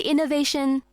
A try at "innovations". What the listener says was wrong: Hold on, innovations. We have lots of innovations, so put a bit more emphasis on the S.